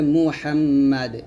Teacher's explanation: এই দালটা সাকিন হবে কলকলা হবে